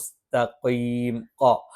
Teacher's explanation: നാവിന്റെ അറ്റം മേലെ മുൻപല്ലിന്റെ മുരടിലാണ് അതോടൊപ്പം ചെറുതായിട്ടഒന്ന് പല്ലിലേക്ക് ചേർന്നു നിൽക്കും